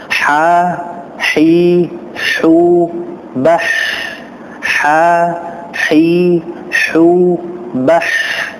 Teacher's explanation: huruf ha ini adalah huruf yang keluar dari tengah tenggorokan. Maka jelaskan pengucapan ha.